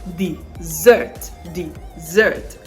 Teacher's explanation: s the sound there is the z sound so dessert dessert the stress is on the second syllable